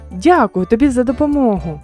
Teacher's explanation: вони вимовляються з підвищеною інтонацією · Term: окличне речення